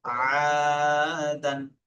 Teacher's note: আলিফের ডান দিকে জাবার আছে, আলিফ মাদ্দা বলে, আলিফ মাদ্দাকে এক আলিফ পরিমাণ টান দিয়ে পড়তে হবে। দালের উপর দো জাবার আছে, দো জাবার তানবিন, তানবিন নুন সাকিনের আওয়াজ একই রকম।